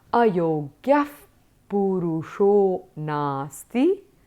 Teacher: Since the ayogyaha ends with a visarga and is followed by the sound p, the yogyaha becomes yogyaf.